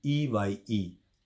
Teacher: It is an body organ where we noticed that the vowel A is uttered loudly and a glide from AI to I results in a decreased loudness. In other words, the last I part is shorter and quieter. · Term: diphthong